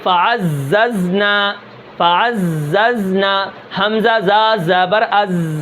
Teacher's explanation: یہ جو زا ہے اس کے اندر سیٹی ہے کیونکہ اس کے اندر صفیر ہے، صفیر کے 3 حرف ہیں، زا سین صاد، یہ 3 حرف سیٹی والے ہوتے ہیں، ٹھیک ہے۔